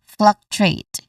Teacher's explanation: Stress is on the first syllable.